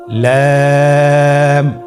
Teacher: লাম হরফটি উচ্চারণের ক্ষেত্রে অবশ্যই বারিক হবে এবং 3 আলিফ টেনে পড়তে হবে।